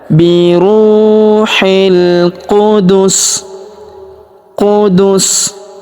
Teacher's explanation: Wa ayadnahu biruhil huruf ru kita panjangkan dua harakat karena wau sukun di depannya biruil huruf hi langsung sambung masuk ke huruf lam yang berharakat sukun alif lam qamariah alifnya tidak dibaca